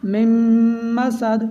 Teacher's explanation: نون silent ہوگا، میم کو میم کے ساتھ ملائیں گے، یہاں پر بھی میم مشدد میں غنہ ہوگا۔